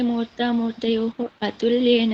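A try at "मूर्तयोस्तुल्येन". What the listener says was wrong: Atulyana. Ra is, no, you have to make it sa. It's not ra. Murtayos is sakara. Otherwise, how will it? Murtayo. Murtayoho. No, murta, it is sakara you have to do. In my book, it is, I have made the correction. Murtayos Sakara.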